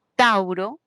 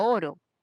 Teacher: teníamos la secuencia Au es un diptongo dos vocales no la vocal abierta más la cerrada